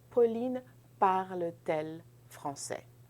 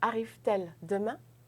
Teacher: vous ne pouvez pas avoir deux sons de voyelles ensemble, donc je vais ajouter la consonne T, hyphen T hyphen.